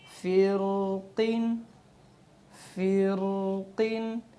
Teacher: را ساکن سے پہلے حرف کے نیچے زیر ہے لیکن را پھر بھی موٹی پڑھی جاتی ہے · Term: را موٹی